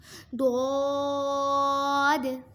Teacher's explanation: ضاد زبان کی کروٹ اور اوپر کے داڑھوں کی جڑ سے ادا ہوتا ہے۔